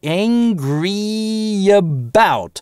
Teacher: это напряженный звук, tense vowel, поэтому мы его напрягаем, во-первых, чётко, а, во-вторых, связываем с последующим шва через linking [j]